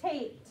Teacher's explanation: that ED in the word taped makes the sound T